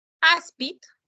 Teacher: Áspid se acentúa la penúltima sílaba, es una palabra grave.